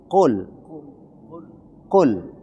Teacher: Qul penyebutan qul itu bukan qul tapi qul. Huruf qaf itu ditenggorokan. Maka tidak boleh dia di ujung lidah